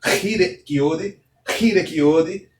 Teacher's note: é como se fosse um som de um H um pouco mais aspirado, um som de um H fortemente aspirado